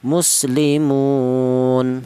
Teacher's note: seperti contoh muslimun atau wajah yang ketiga boleh dibaca qasar artinya pendek yaitu satu alif atau dua harakat atau dua ketukan